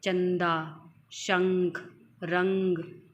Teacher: अनुस्वार अनुसार क्या होते हैं इसका उच्चारण नाक से होता है